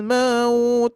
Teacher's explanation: E mimnya jangan sampai terbaca panjang